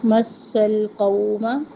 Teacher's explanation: سن میں سختی اور سیٹی